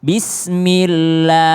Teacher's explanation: Tapi ketika berbaris kasrah, bismillah, nah, Allahnya jadi tipis